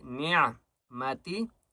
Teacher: عین کے وضع حلق سے نکالیں گے